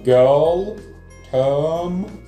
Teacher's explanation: В британском варианте никаких «р» нету